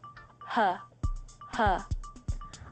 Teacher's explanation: this English sound is pronounced by having air pass out of your mouth just like breathing out only adding a voiced sound you should feel a vibration in